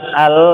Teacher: Kalau lam kan antum bilang al, ini kan ujung lidahnya memang nempel ke gusi gigi seri atas